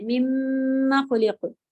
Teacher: مما میں میم مشدد کے ساتھ الف کی حمزہ حرکت ہے تو کھینچیں گے نہیں ، مما خلق نہیں ہے، مما خلق، قلقلہ ہے بھی، خلق